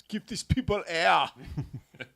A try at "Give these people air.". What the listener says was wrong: Yeah, you got to have multiple syllables in air.